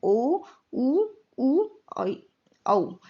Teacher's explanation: जो होठ होते हैं वो पूर्ण रूप से गोलाकार हो जाते हैं, तो वो कहलाते हैं वृत्ताकार स्वर। इसमें है ओ, ऊ, औ।